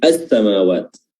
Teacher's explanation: alih-alih kita baca al-samawat tapi langsung dileburkan ke huruf sin, as-samawat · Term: alif lam asy-syamsiyah